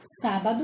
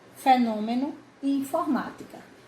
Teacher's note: a tonicidade quanto a tonicidade elas estão proparoxítonas todas porque porque a sílaba tônica é a antepenúltima e todas estão acentuadas